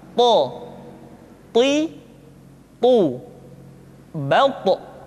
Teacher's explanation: Sehingga dengan dua sifat ini, maka ketika to diucapkan, suara kita terdengar menebal. · To diucapkan dengan menyentuhkan ujung lidah dengan gusi-gusi dua gigi seri bagian atas. Sifat yang dimiliki oleh huruf to yang mesti nampak ketika kita ucapkan adalah sifat al-isti'la dan sifat al-itbaq.